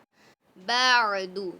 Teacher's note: عین کو حلق کے درمیان حصے سے نکالیے